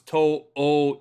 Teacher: this is one of the few words where the elongated vowel sound is an o